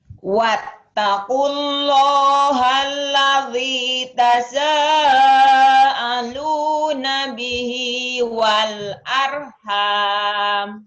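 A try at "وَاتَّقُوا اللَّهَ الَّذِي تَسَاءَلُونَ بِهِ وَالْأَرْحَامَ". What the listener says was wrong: Tapi di sininya nih, ladinya kurang madnya sama ini. Jangan wattaqullah. Ada W-nya. Wattaqullah. Ada W-nya. Seperti ada W-nya ya, seperti ada waw. Bukan wattaqullah. Wattaqullah.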